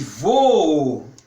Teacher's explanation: Isso é um hiato, porque as 2 vogais são pronunciadas.